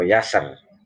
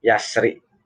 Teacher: Kalau tafkhim kalau dibaca waqaf, kalau dibaca wasal ro tarqiq karena kasroh. Adapun ini waqaf jaiz.